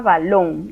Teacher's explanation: Le llamamos la última sílaba de derecha a izquierda, es la número 1. O sea, la palabra balón, contando de derecha a izquierda, la sílaba 1 es la sílaba lon, esa es la que lleva la fuerza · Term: palabras agudas